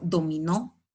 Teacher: dominó es una palabra aguda porque la mayor fuerza de voz está en la última sílaba, pero la tildo porque termina en vocal.